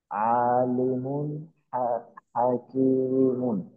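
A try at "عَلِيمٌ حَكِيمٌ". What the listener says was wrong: আচ্ছা, এখানে টানটা কিন্তু একটু আটপিস হয়ে গেল। আইনে টান হবে না, লামের জেরে টান হবে।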